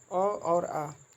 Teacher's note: अ और आ जो है कंठ और जीभ के निचला हिस्सा से मिलकर बना है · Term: कंठ स्वर